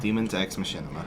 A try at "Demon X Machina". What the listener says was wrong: And you just pronounced Machina weird. Like you really emphasized the Machina.